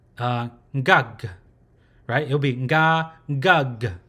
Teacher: So the nasal sound is then produced first and then the g at the end with a slightly closing mouth. So it's not so much of a open mouth anymore, it's slightly closing mouth. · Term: closed syllable